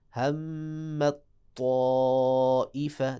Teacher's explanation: جب تا کا طا میں ادغام کریں گے تو پھر طا جو ہے اس کو موٹا پڑھیں گے اور یہ جو تا ہے یہ بالکل چھپ جائے گی. ہمت طائفہ، دیکھا ہمت، شروع میں تھوڑا سا تا محسوس ہو، یعنی تھوڑا سا باریک پن، فوراً تا کا جو بھاری پن ہے وہ سامنے آ جائے، استعلا کی صفت سامنے آ جائے.